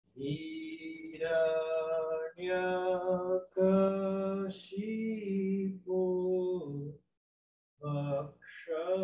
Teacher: Esse X, ele é retroflexo, quer dizer o quê? A língua se volta para o céu da boca.